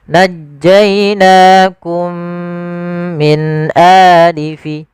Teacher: kita masukkan mim yang pertama kepada mim yang kedua, kemudian ditahan dengan gunnahnya. Najjainakum min a, jangan najjainakum min a, tapi ditahan. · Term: idgham mimi